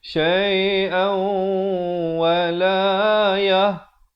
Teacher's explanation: Asalnya syai'an, bila bertemu waw dibacakan masuk beserta dengung kadar panjang 2 harakat. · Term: Idgham bi gunnah